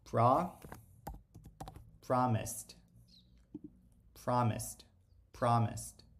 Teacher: perceba que a sua garganta ela não treme isso é um indicativo de que a gente vai ter um som de t